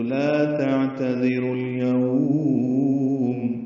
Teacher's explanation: وقف کریں گے تو لین عارض للسکون بنے گی، یعنی لین وقفی ہو جائے گی، تو لا تعتذروا اليوم لمبا کر دیں گے اور میم ساکن پہ اظہار ہوگا۔